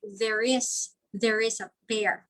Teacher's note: it's as if there's a letter R that includes in between the two words. So that is intrusion.